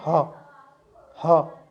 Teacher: तो स्वयंत्र जो होता है हमारा वो है होता है, बोलते हैं ना हा, हा। तो यहाँ ना तो तालू पे लगती है जीभ, ना मूर्धन्य है, ना दांतों पर लगती है जीभ, डायरेक्ट कंठ से निकलकर हवा निकल जाती है ऐसे, जैसे कि हा बोलते हैं ना।